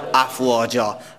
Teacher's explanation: هر وقت که با دو زبر وقف میکنیم استاده میشیم، به الف تبدیل میشه. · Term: مد ایواز